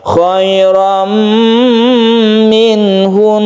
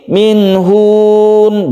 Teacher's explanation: khoirom minhun jadi ditahan membacanya tidak langsung minhun bukan seperti itu karena dia itu bertasydid maka digunnahkan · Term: gunnah musyadadah